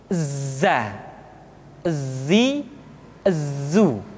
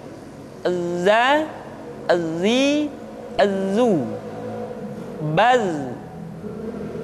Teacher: Tetapi ingat, huruf za bersifat al-jahr. Artinya, ketika kita mengucapkan huruf za, suara kita mengalir, akan tetapi nafas tidak boleh mengalir.